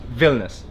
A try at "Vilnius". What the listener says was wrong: It's not that soft.